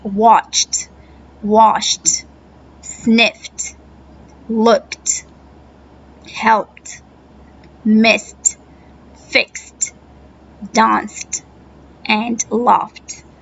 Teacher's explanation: the T sounds is used after the unvoiced sound unvoiced the sound that doesn't have a voice that don't have